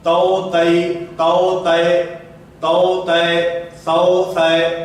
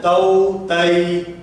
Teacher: یہ جو مجہول پڑھا جا رہا ہے یہ مجہول بھی نہیں پڑھنا، معروف طریقے پر پڑھنا ہے